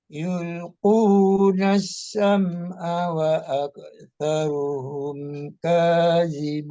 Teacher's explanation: Aksaruhum kadzibun zal juga di ujung lidah juga.